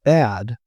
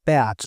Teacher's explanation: So the example that I just talked about with bad and bat, we can talk about the length of the vowel a as being one of these kinds of variables. So for the word bad, the vowel is long. But for bat, the vowel is short. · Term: allophones